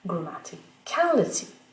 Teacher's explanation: le stress, l'accent primaire est attiré vers le dernier suffixe fort. Donc, c'est le dernier qui l'emporte.